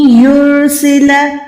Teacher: नून साकिन के बाद या है, यानी यहाँ पर इद्गाम करें, गुन्ना करें।